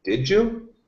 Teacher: second sound d plus y equals J